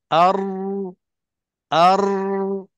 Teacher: Dia tekan satu dan getaran itu nak kena kawal. Jangan ada lebih daripada 3 getaran.